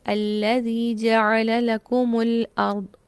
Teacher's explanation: پھر اسی طرح نیکسٹ آیت دیکھیے، الذی جعل لکم الارض، لکم لکم تھا لفظ، میم کو پیش دے کے اگلے لفظ کے ساتھ ملا دیا گیا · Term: میم جمع